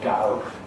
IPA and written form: gʌʊ (go)